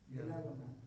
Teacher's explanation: دال اور تا دونوں اکٹھے آ رہے ہیں، دونوں قریب المخرج ہے تو ادغام ہوگا